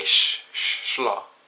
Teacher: if the S comes before an L, it gives the SH sound. So for the word for snake in Norwegian is slonge.